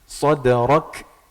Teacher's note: huruf kaf itu sifatnya ada hamasnya, ada aliran udara dikit, tapi dikit aja, hanya akan ketahuan, hanya akan kedengeran ketika harokatnya sukun.